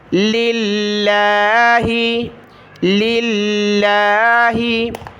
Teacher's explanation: लफ्ज़ अल्लाह के शुरू में लाम नहीं होता, आप जानते हैं, ये लाम पहला लफ्ज़ है, यानी लफ्ज़ अल्लाह से पहले का है, तो इसमें ज़ेर है, तो हमने लफ्ज़ अल्लाह को बारीक पढ़ना है